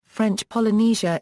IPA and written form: ˈfrɛntʃ pɒlɨˈniːʒə (French Polynesia)